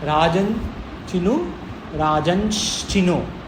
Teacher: श आ गया क्योंकि स्थान है स्थान हियर इज तालु चकार इज तालु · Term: तालव्य शकार